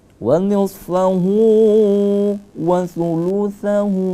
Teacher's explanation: Hu-nya kita agak baca panjang, ada semacam dhamma terbalik seperti angka 6 di situ. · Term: mad silah qasirah